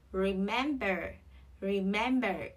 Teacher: trọng âm rơi vào âm tiết thứ hai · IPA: /rɪˈmembə(r)/